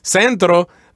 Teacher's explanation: the accent goes in the first syllable, just like in English